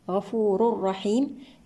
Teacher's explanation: التنوين مع حرف الراء إدغام بغير غنة كاملة